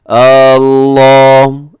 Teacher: اللہ ایسے شروع میں حمزہ کو لمبا کر دیتے ہیں، تو یہ درست نہیں ہے، حمزہ کو الف بنا کے پڑھتے ہیں تو یہ درست نہیں ہے۔